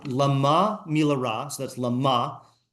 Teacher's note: In the first case, the stress is on the syllable ma